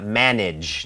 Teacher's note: จริงๆแล้วเสียงgก็จะเป็นเสียงCHเพิ่มเสียงกล้องที่ลำคอนะครับ เ่อดังนั้นชะเพิ่มเสียงกล้องเป็นJAนะฮะmanageนะฮะซึ่งถ้าเราถ้าเราวิเคราะห์นะฮะจริงๆtแล้วก็ตามด้วยก็คือCHนะฮะดังนั้นTก้องก็คือตัวดีนะฮะดเด็กเป็นเดะตามด้วยเยเฮะอย่างนี้นะฮะเป็นเดังนั้นถ้าเราพูดคำว่าmanageนะฮะให้หยุดที่ตัวดีก่อนก็ได้นะครับmanageนะฮะmanageอย่างนี้นะครับmanageนะหรือคำว่าเสียหายนะครับหรือว่าความเสียหายที่เป็นเป็นคำนามนะครับเป็นDamageDamageนะฮะDamageฮเสียดที่ครับ